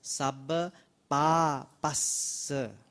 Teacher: Notice there are two S there. So both are audible.